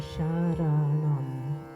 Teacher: the R and the M, Sharanam, are both tapping the roof of the mouth.